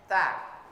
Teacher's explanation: ujung lidah menyentuh gigi bagian atas, seri atasnya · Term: huruf ta